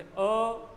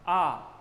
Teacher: अब अ और आ का उच्चारण अगर हम करके देखें, जैसे अ, आ, तो अ में कम वायु, समय कम, आ में उससे ज़्यादा।